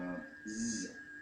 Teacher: So the hissing produced with the tongue, and then the feminine fire, which is Z. So again, you're using the tongue, but you are producing a voiced hiss.